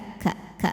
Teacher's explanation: Ka ada anginnya Jadi bukan ka ka tapi ka ka ka ada anginnya dari pangkal lidah ya pangkal lidahnya datar